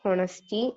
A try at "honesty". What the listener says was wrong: It's honesty. H is silent. Okay. It's honesty, not honesty.